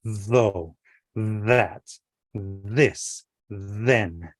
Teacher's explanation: we're very deliberately putting our tongue on our uh front teeth to make a th sound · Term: voiced